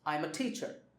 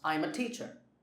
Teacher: the focus is on teacher because that is the main information in the sentence